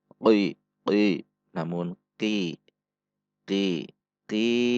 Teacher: Perhatikan sifat dan makhraj huruf qaf. Huruf qaf itu posisi makhrajnya berdekatan dengan huruf kaf. Jangan sampai dibaca terlalu ke dalam.